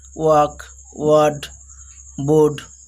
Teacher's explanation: When R is used before consonant, they don't pronounce here. British people don't pronounce R when it is used before consonant letter.